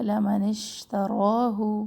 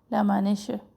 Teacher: شین میں پھیلنے کی صفت ہے قلقلہ نہ ہو اس میں